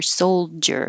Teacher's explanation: to put a D in there soldier you can't tell because both the D and the J are going to stop the airflow and that's what makes the J noise